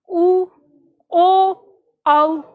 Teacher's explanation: जिन स्वरों के उच्चारण में जीभ का पिछला भाग काम करता है, यानी आवाज जो आएगी या जो रिएक्शन होगा हमारी जीभ पर, वो पीछे वाले हिस्से पर होगा। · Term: पश्य स्वर